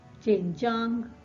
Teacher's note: jin, the third tone, jiang, the first tone, jin jiang